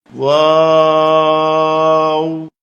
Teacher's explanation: এই হরফটি 4 আলিফ পরিমাণ লম্বা করে বলতে হবে। 2 ঠোঁট গোল করে শুরু হবে, 2 ঠোঁট গোল হয়ে শেষ হবে, মাঝে কিছু টাইম মুখ খুলে থাকবে। 4 আলিফ লম্বা হবে।